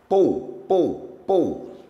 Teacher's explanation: não vibra o nariz. Pouco é oral. Quando vibrar é nasal